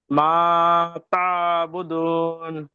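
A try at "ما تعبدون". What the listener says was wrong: মাশাল্লাহ, এবার হয়েছে।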